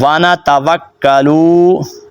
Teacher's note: تھوڑا سا جھٹکا دینا ہے بیکا اگے پڑھنا ہے وانا توکلو لام کو اپ نے لمبا نہیں کرنا